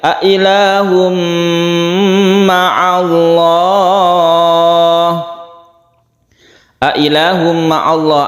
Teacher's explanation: A ilahum ma'allah ada tanwin bertemu dengan mim idgham bi gunnah. Mim yang bertasydid ini bentukan dari tanwin yang masuk ke mim sehingga menjadi tasydid, sehingga didengungkan.